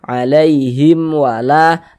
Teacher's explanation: Nah, jadi kalau ada mim sukun tidak bertemu dengan huruf ba, tidak bertemu dengan huruf mim, hukumnya izhar syafawi. Baca jelas tak berdengung, baca pendek saja. · Karena di sini ada alif, sebelumnya ada harokat fathah. Sehingga la dibaca panjang, mad tabi'i panjang 2 harokat.